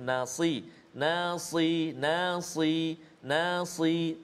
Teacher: huruf sad yang berbaris bawah, masih ada sifat isti'la dia tu, nasi, nasi, nasi, nasi, tebal bunyinya